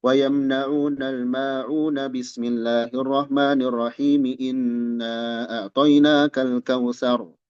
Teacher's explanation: Jadi akhir surah, basmalah, dan awal surah berikutnya disambungkan seluruhnya tanpa berjeda. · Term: Waslul jami, waslu akhir surah